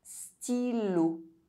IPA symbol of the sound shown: i